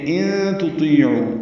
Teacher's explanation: نون ساکن کے بعد تا آنے کی وجہ سے اخفا ہے، تا باریک ہے، تو پر ہے.